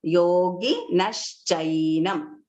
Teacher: The visarga has become sh.